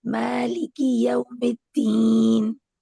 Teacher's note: مالکی کی کو بالکل لائٹ پڑھیں